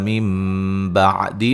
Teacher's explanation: نون ساکن کا اقلاب ہے، نون کو میم سے بدل دیں گے